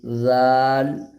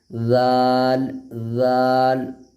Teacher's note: اب ذال کا مخرج وہی ہے جو سا کا مخرج ہے، زبان کی نوک اور دانت، آگے کا جو دانت ہے دو ٹھو بڑا والا، اس میں سٹانا ہے تھوڑا سا، زبان آگے کا والا حصہ زبان کی نوک کو سٹانا ہے، آٹومیٹک ذال ادا ہو جائے گی۔